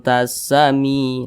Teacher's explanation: Nah, jadi makharijul huruf nun dengan huruf ta ini dia masih deketan begitu. Jadi bunyi samarnya itu dia lebih dominan daripada bunyi dengungnya. Jadi dia lebih condong berbunyi n, tapi disamarkan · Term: ikhfa hakiki aqrab